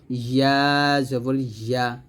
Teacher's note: হামজাহ জবর আ আমরা গলার শুরু থেকে নিয়ে আসবো, চাপ দেবো না, আর আইনটা গলার মাঝখান থেকে একটু চাপ দিয়ে বলবো আইন জবর আ, আর ইয়াটা জিহ্বার মধ্যখান তার বরাবর উপরে তালুর সঙ্গে লাগিয়ে বলবো